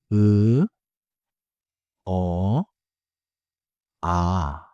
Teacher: Hear 으, 어, 아 — none of them need round lips. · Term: unrounded set